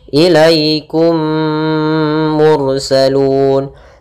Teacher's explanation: memasukkan mim pertama kepada kedua sambil ditahan gunnahnya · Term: idgham mimi